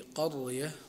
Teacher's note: من الراءات التي يتفق القراء على تفخيمها